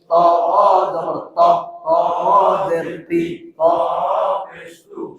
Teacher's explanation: সামনের উপরের দুই দাঁতের গোড়া থেকে মোটা ভাবে আদায় হবে